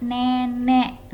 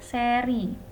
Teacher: E-nya itu kan cenderung lebih terbuka ya, rahangnya lebih terbuka. Bedakan dengan seri.